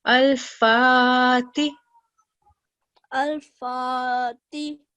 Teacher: we're prolonging the sound over here because we have vertical fatha